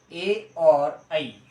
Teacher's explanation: कंठ तालब से बोले जाएंगे आपके ए आई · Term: कंठ तालव्य